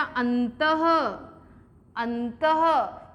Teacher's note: जैसे प्रातः, तो जैसे ही विसर्ग लगा हमने उसका ह साउंड निकाला